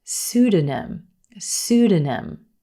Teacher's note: the p is totally silent in this word emphasis on the first syllable suda pseudonym and a pseudonym is